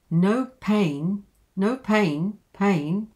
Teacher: so it comes up at the end because there's something to come